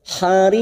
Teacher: Bul hariq, mat arid li sukun karena ada mat yang bertemu dengan huruf hidup dan dibaca waqaf kita panjangkan 4 harokat. Ujungnya kita pantulkan karena ada huruf qaf, qalqalah kubra.